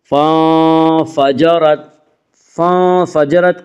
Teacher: فَانفَجَرَتْ کی را کو پر پڑھا جائے گا، اس کا قاعدہ یہ ہے کہ را کے اوپر زبر اور پیش ہے تو را کو پر پڑھا جائے گا، را کے نیچے زیر ہے تو را کو باریک پڑھا جائے گا، یا را کے اوپر زبر ہے اس سے را کو پر پڑھیں گے۔